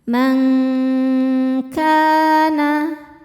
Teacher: Cara membacanya bunyi nun ini samar-samar siap-siap menuju kaf disertai bunyi dengung. Dengungnya besar, samarnya kecil. Karena kaf makhrajnya jauh dari nun. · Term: ikhfa hakiki ab'ad